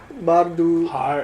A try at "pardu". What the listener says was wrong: It's not a B. Pardu chapa. The key here is this word here, which is confusing. And by the way, a soft wa can't come after s. Not possible. This can't be war. So it must be part.